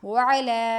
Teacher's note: واو کو موٹا پڑھیں گے ہونٹوں کو گول کر کے